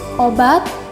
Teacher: tengah belakang bundar yang direalisasikan dengan bunyi o